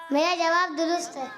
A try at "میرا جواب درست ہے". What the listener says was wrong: اس طرح نہیں نا، جوش کے ساتھ. نہیں میرا جواب درست ہے.